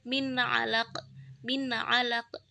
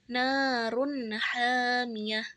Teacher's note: Itu adalah idhar hakiki karena jelas, dibacanya jelas, tidak dengung dan tidak samar.